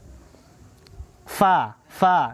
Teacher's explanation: hamas, nafasnya berhembus atau berdesis.